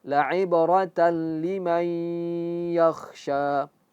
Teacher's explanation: Tanwin bertemu dengan lam menjadi idghom bilagunnah. Dia masuk langsung.